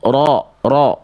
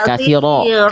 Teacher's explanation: Ro-nya tebal Bunda, bukan kathiral.